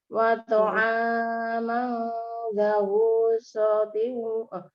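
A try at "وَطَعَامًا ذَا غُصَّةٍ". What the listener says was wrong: Hanya barusan yang terakhir jenengan kepanjangan. 2 saja. Wa ta'aman dza ghussatin wa 'adzaban alima.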